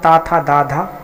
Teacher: इनका उच्चारण स्थान दांत से होता है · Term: दंत वर्ण